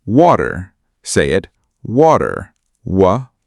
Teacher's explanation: Your lips make a rounded shape like you are about to say ooh. Then say w. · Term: W sound